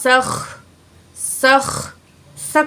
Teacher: سین میں سیٹی والی آواز ہوگی